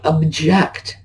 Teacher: on the first syllable now but if I object to it I switched the accent over to the second syllable